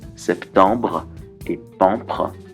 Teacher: la rime assonancée en « an », suivie d'une bilabiale B ou P